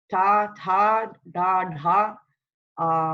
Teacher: Retroflex and aspirated consonants